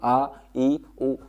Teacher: आप यहाँ पे हाथ अपने मुंह के पास में लगाइए और फिर बोलिए आ, ई, उ, हवा नहीं निकलेगी, बहुत कम मात्रा में हवा निकलेगी, इसलिए क्या है, ये अल्पप्राण